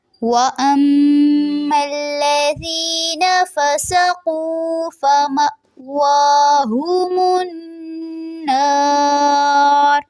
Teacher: النار میں نون مشدد پہ غنہ ہوگا، ناک میں آواز لے کے جائیں گے، اور آخر میں جو را ہے اس کو پر ادا کرنا ہے